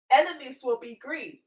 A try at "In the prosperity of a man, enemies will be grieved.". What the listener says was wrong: Enemies will be grieved. putting the wrong emphasis on that. In the prosperity of a man, enemies will be grieved.